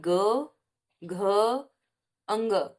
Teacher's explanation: जब हम क, ख का उच्चारण कर रहे हैं तो नहीं हो रहा है, लेकिन ग, घ, अंग, इनका उच्चारण कर रहे हैं तो स्वर तंत्रिकाओं में कंपन हो रहा है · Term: सघोष